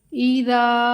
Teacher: دال کو 1 الف کے برابر لمبا کریں گے